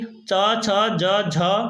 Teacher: चा वर्ग के च, छ, ज, झ और यहाँ ये सब तालव्य होते हैं। ये तालु से जीभ लगती है जाके, तो ये तालव्य हो गए।